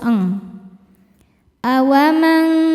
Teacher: Karena nun sukun bertemu dengan kaf. Cara bacanya nun disamarkan ke kaf disertai dengung. Dengungnya besar karena kaf makhrajnya jauh dengan nun. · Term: ikhfa hakiki